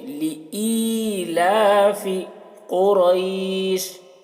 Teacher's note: لئی، اسے لئی پڑھیں گے، یا مدہ ہے تو اسے ای کو کھینچیں گے